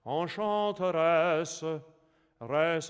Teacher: it's a schwa just like the German, it's like our a vowel in English